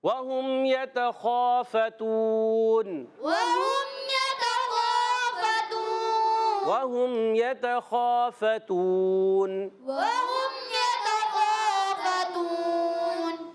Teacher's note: زبر خا ایک الف کھینچنا ہے، خا حرف مستعلیہ میں سے، خا حلق کے اوپر والے حصے سے ادا ہوتا ہے ، غین اور خا حلق کے اوپر والے حصے سے موٹا